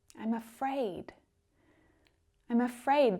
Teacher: I'm afraid - that almost sounds like one word doesn't it when spoken quickly and naturally